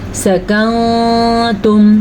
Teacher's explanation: میں نے غنہ بھی کیا اور میں نے نون کو چھپایا ہے۔